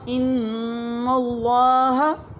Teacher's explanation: ایک دفعہ پھر پڑھیں، نون کی آواز کو ناک میں لے جائیں. ان اللہ. اللہ کو پر پڑھنا ہے. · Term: نون مشدد